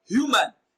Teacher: Humane is stressed on its second syllable, but human is stressed on its first syllable.